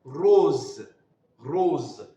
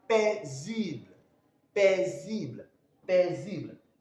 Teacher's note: when the S comes in between two vowels, then the pronunciation becomes what? Z.